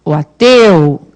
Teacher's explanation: apesar de ser sílaba tônica, o som desse ditongo é fechado